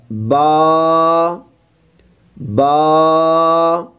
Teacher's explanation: با، ایک الف کی مقدار لمبا کریں گے